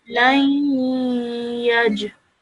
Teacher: whilst joining the lam to the ya mushaddad, we're going to produce a 2-second nasal sound because of the noon sakin. Okay, so and then afterwards we're going to join the jim onto that.